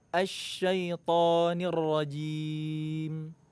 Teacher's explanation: huruf to ini sifatnya tebal, kuat, jadi nggak perlu bibirnya maju.